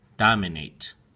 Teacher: Dominate has 3 syllables, dom-min-nate. And the emphasis or stress is on the first syllable, dom. Dominate. Make sure that you pronounce the A sound with a hard A and the T sound at the end, 8.